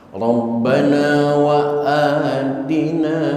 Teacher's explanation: Rabbana wa atina, a-nya mad badal, panjangnya hanya 2 harokat.